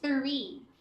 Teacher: The TH there is voiceless, so the air should be coming out. 3. It's not tree.